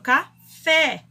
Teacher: Então, o E, aí é a sílaba tônica, fé.